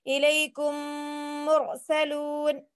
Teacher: میم ساکن کے بعد میم آئے تو میم کو میم سے ملا کر غنے کے ساتھ پڑھا جائے گا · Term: ادغام شفوی